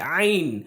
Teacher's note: تو عین جو ہے وہ حروف حلقی میں سے ہے، جو کہ جہاں سے ہا ادا ہوتا ہے، یعنی درمیانی حلق، وہاں سے عین بھی ادا ہوتا ہے